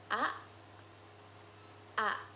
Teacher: Huruf A dibentuk dengan lidah yang berada di posisi rendah dan tengah serta bibir yang rileks.